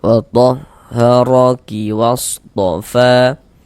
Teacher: Fa dibaca panjang. Mad thobi'i panjang dua harakat.